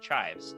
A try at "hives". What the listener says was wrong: Chives, what you put on the potato. No C. Hives.